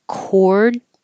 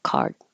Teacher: cord your lips have to round cord and card your lips don't round they say open ah